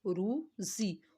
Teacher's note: اور را کو موٹا، زا کو پتلا